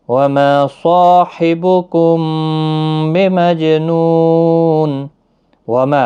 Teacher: ما الف مدہ ہے، صا الف مدہ ہے، دونوں کو ایک ایک الف کی مقدار کے برابر کھینچ کر پڑھیں گے ، صاد حروف مستعلیہ کا حرف ہے، پور بھی پڑھنا ہے۔